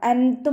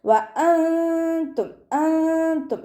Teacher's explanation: നൂൻ സാക്കിനയെ മറച്ചു വെച്ച് മണിച്ചോതി കൊടുക്കുക കേട്ടോ. അൻതും എന്ന് ഉച്ചരിക്കരുത്. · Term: ഇഖ്ഫാ